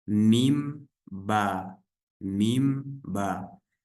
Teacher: У них также одинаковый махрач — это губы. То есть буквы мим и ба мы произносим, смыкая обе губы.